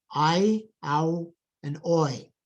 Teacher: there is this dramatic movement of the tongue, typical of long vowels. And it's very dramatic because we actually go from one vowel to another vowel, and then we have created one phoneme. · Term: diphthongs